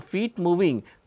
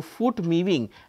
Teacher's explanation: this kind of error from feet moving to foot moving actually expresses the ee turns into oo